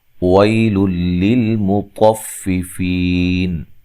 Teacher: ویل للمطففین، وی یا لین ہے، لل یہاں نون تنوین کا ادغام ہے بلا غنہ، غنہ نہیں کریں گے